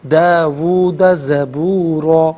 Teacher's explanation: وقف کی صورت میں دو زبر کی تنوین الف سے چینج ہوتی ہے تو وقف کی صورت میں سے ہم پڑھیں گے داوود زبورا۔